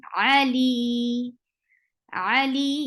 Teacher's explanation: When you are giving waqf for mad arad li sukun, you will convert this 2 haraka long vowel to 4, because you are giving a temporary sukun at the end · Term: mad arid li sukun